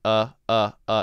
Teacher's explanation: it's almost what we call a schwa sound which means we don't stress it